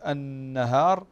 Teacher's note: النون مشددة تغن بمقدار حركتين